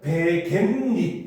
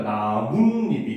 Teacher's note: 뒷말의 첫 소리 모음 앞에서 니은 소리가 덧난대요. 그래서 이거를 우리는 니은 첨가라고 합니다.